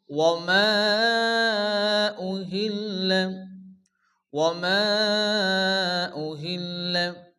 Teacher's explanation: মধ্যে মুনফাসিল, 4 আলিফ পরিমাণ টান দিয়ে পড়তে হবে।